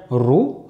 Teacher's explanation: Lorsqu'on va avoir les autres voyelles, notamment la damma et la kasra, là, on ne va plus avoir d'emphase.